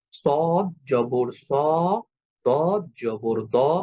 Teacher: মোটা হরফগুলার সময় আপনাকে কিন্তু অবশ্যই অ সাউন্ডে উচ্চারণ করতে হবে সদ জবর স ত জবর দ অর্থাৎ স দ তখন যদি আমি বলি সাদা তাজ এটা ভুল উচ্চারণ হবে কারণ সদ জবর স এটা মোটা হবে দ জবর দ এটা মোটা হবে।